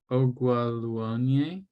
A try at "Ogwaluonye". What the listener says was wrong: You kind of have to go up. Ogwalonye. You have to go up.